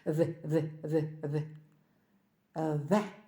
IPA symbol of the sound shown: ð